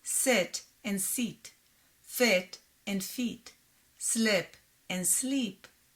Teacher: in hebrew the words sit and seat fit and feet slip and sleep sound the same